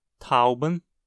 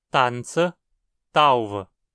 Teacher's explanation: Muitas palavras em que o alemão tem tʰa, o hunsriqueano tem ta